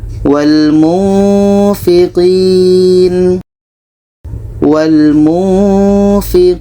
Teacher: Ini nun mati bertemu fa, kita baca wal munfiqin wal munfiqin Ketika sebut huruf nun, kita sudah merasakan huruf fa. Ini menghasilkan seperti bunyi mim. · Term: ikhfa hakiki